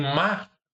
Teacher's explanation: Em má, esse R, esse rótico é apagado.